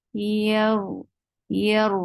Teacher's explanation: Don't make the sound of j in yeah. You're lifting your tongue up, but your tongue is not touching the palate. That's why the sound is very like you feel like there is no muscle in your tongue when you are pronouncing yeah.